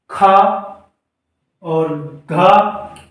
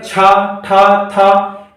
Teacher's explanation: हमारी हथेली पर हवा महसूस होती है, यानी कि ज्यादा हवा निकलती है। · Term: महाप्राण